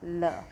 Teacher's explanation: क्या होता है, जिन व्यंजनों का उच्चारण करते समय जीवा का अगला भाग मसूड़ों को स्पर्श करता है और हवा पार्श्व के आसपास से निकलती है, यानी कि अगल बगल से बाहर निकलती है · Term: पार्श्विक व्यंजन